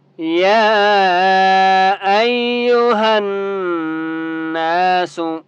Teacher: یا کو ہم نے 3 سے 4 الف کی مقدار کھینچ کر پڑھنا ہے ، ٹھیک ہے، ایو، حمزہ یا زبر ای، یا پیش یو،